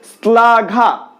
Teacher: যেমন ধরো শ্লাঘা, শ্লাঘা তালব্য স এর সাথে ল রয়েছে, সেক্ষেত্রে শ্লাঘা, শ্লাঘা হওয়ার কথা শ্লাঘা, কিন্তু শ্লাঘা কি আমরা উচ্চারণ করছি, আমরা উচ্চারণ করছি শ্লাঘা, দাঁতের সাথে জিভটাকে স্পর্শ করাচ্ছি, তো দন্ত স এর মতো উচ্চারিত হচ্ছে।